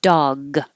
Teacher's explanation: G is the last sound, and G is voiced. You should feel vibration in your throat.